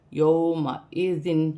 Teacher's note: واو لین کو کھینچا نہیں جائے گا